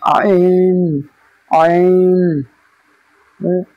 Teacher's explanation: কণ্ঠনালীর মাঝখান হতে উচ্চারিত হয় আইন